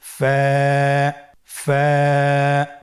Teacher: ফায়ের মাখরাজ হলো নিচের ঠোঁটের প্যাড সামনের উপরের দুই দাঁতের আগার সঙ্গে লাগিয়ে উচ্চারিত হয়।